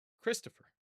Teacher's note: Both the O and the E reduce. They become reduced vowels.